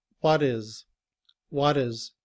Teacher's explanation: In reduced form, is doesn't really change. However, when it's combined with the word what, the letter T becomes the sound of the letter D. And we say, what is?